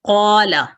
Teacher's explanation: اس میں آپ کی زبان زیادہ الف کے موجود ہونے کی وجہ سے زیادہ گولائی کی طرف جاتی ہے، زیادہ تفخیم کی طرف جاتی ہے